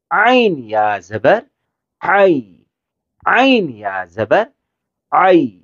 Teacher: ہا کی طرح عین گلے کے بیچ والے حصے سے